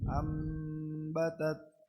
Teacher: نون ساكنة منقلبة لميم مخفى عند الباء المفتوحة بغن حركتين